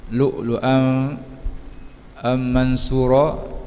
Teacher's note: memasukkan tanwin kepada mim, dibaca dengan dengung qadar panjang dua harakat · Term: Idgham ma'al gunah